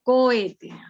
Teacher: hay fuerza de voz en la penúltima sílaba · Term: acento prosódico